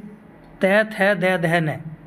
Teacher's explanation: ये तै थ दै ध न, इन सभी में जीव का भाग दांत से टच करता है